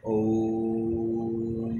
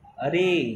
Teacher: रे को आप जब ज़्यादा लंबा खींच रहे हैं तो भी एक प्लुत स्वर है